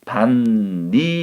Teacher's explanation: 그 다음에 세 번째, 다시 이것이 뒤에 오는 비음, 니은 때문에 앞에 오는 그드부, 디귿이 비음으로 바뀌어서 최종적으로 반니랑이라고 발음하는 것이 표준 발음이라는 거죠. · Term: 비음화